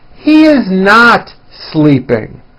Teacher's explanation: notice how my voice comes down at the end of a sentence that is not a question